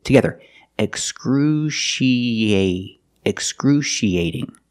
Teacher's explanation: We link the E and the A with a y sound.